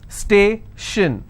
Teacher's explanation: Station, so I will stress on stay